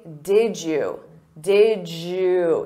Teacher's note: Native speakers will combine did you and say did you. Did you. So you hear a j sound. Did you. Or we can reduce that to did ya or did ya.